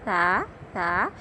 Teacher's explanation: یعنی جب آپ نے سا کو ادا کرنا ہے، اس میں سیٹی نہیں آئے گی، اس کو سا سا سا نہیں پڑھیں گے، اس کو پڑھیں گے سا سا۔ جب آپ نے سا ادا کرنا ہے، آپ کی زبان کی نوک جو ہے وہ سامنے کے اوپر والے دونوں دانتوں کے کنارے سے لگے گی اور ہلکی سی باہر آئے گی، ہلکی دال یا چاول کے دانے کے برابر۔